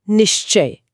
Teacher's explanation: जब कोई च बोलता है तो जीभ मुंह की छत को यानी तालू को छूती है। अब जब विसर्ग की हवा बाहर निकलने की कोशिश करती है तो वो उसी तालू पर टकरा कर घिसटती है। · निह प्लस च हां निश्चय। यहां विसर्ग के बाद च आया है और विसर्ग आधा श बन गया। शलगम वाला श। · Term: तालव्य ध्वनि